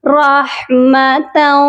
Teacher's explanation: تا کو جب واو مشدد کے ساتھ ملائیں گے تو بہت سے لوگ یہاں پر ایک غلطی کر جاتے ہیں کہ تا کو واو کے ساتھ سختی سے جوڑ دیتے ہیں کہ واو مشدد ہے اس لیے، لیکن ایسا پڑھنا درست نہیں ہے۔ تا کو واو کے ساتھ ملائیں گے لیکن سختی سے نہیں ملائیں گے، بلکہ غنہ کر کے ملائیں گے، کیونکہ جب بھی تنوین کے بعد حروف یرملون کے 4 حروف یا، میم، واو، نون، یہ 4 حروف آتے ہیں تو غنہ بھی کیا جاتا ہے، تو یہاں ہم غنہ کریں گے رحمتاؤ۔